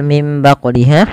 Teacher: Kembali lagi di lafal mim baquliha ada nun mati bertemu ba, maka hukumnya sama, yaitu dengan tumbitu, yaitu iklab. Cara membacanya mengganti suara nunnya menjadi suara mim dan ditahan. Kemudian pada lafal baquliha ada bacaan qalqalah pada lafal huruf qaf yang disukunkan.